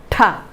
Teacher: ഉയർന്നിരിക്കുന്ന നാവിൻറെ തുമ്പ് വായുടെ മുകളിലുള്ള ആൽവിയോളാർ റിഡ്ജുമായി ചേർന്നിരിക്കുന്നതുകൊണ്ട് നിശ്വാസവായുവിന് പുറത്തേക്ക് കടക്കാൻ സാധിക്കാതെ പൂർണമായി തടയുന്നു